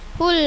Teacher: Hul a izhar qamariyah, lam tarif bertemu ain jelas bacanya.